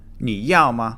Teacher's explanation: You can say the word you, which is ni, which is the third tone. It descends, then sharply goes upward.